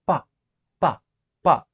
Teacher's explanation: ఇక్కడ చూడండి ప అంటే జస్ట్ మన లిప్స్ దగ్గర ఎయిర్‌ని ఒక్కసారిగా ఎక్స్‌ప్లోడ్ చేసి దాన్ని స్టాప్ చేసి పలుకుతున్నాం ప. అదే బి సౌండ్ ఉంది కదా!